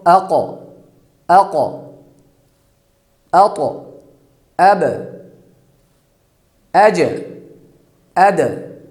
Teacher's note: جب ان پر ساکن ہو تو ان کو ہم ہلا کر پڑھیں گے، مخرج کو ہلائیں گے۔ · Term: قلقلہ